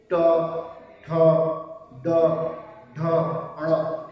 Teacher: ये मूर्धन्य वर्ण है क्योंकि ये मूर्धा से बोल जाता है। · जब आप बोलेंगे ट तो जीभ पीछे की तरफ मुड़ती है, मूर्धा की तरफ जाती है